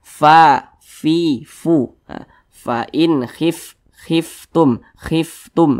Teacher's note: huruf Fa itu salah satu huruf yang memiliki sifat Hames jadi ketika Kita mengucapkannya itu ada nafas yang mengalir